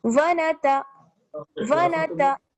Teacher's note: आगे है वनतवक्कलु, वाव जबर वा, नून जबर ना, वना, ता जबर ता, वनता। इसमें देखिए किसी को भी खींचना नहीं है, वनता वनता। ऐसा ना हो कि हम नून को बहुत ज्यादा खींच दें या ता को बहुत ज्यादा खींच दें, तो दोनों को हमें क्या है बैलेंस करके चलना है, सॉरी तीनों को, क्योंकि वाव पर भी जबर है।